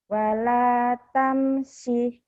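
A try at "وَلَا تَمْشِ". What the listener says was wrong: Kurang shinnya.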